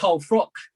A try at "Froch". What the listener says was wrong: Froch, Let me just stop you there, mate. It's Froch, not Frock.